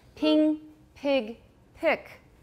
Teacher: Can you hear that vowel getting higher and higher?